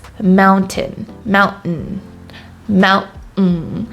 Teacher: So we don't really say the T, we just say mountain. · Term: glottal stop